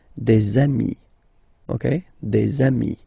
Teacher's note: Okay, and so you've got de ami, okay? And if you make the liaison, so the link between the two, you will get des amis